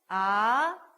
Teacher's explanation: 밑에서 아래로 올라갑니다. 그죠? 이렇게 끌어올리는 그런 느낌의 성조예요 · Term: 이성